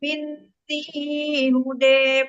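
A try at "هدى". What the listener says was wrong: Ibu, ini huda nggak boleh ini kalau diwasal nggak boleh dibaca taklil. Kan hudan barisnya patatain, awas.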